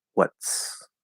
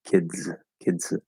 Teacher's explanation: You release the Z. So there's the illusion of a D or illusion of a T if it's voiceless, but there's no actual T or D sound there